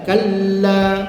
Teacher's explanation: La pun dua ha. Lam sabdu dimutaqqalkan lam diberatkan